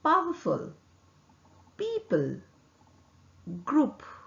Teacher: Also known as plosive. P is articulated with 2 lips. The upper and the lower lips are closed firmly. Vocal cord does not vibrate.